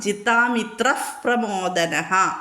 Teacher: വിസർഗം കഴിഞ്ഞിട്ട് പ വന്നതുകൊണ്ട് ഫ ഉച്ചരിക്കണം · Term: വിസർഗ്ഗ സന്ധികൾ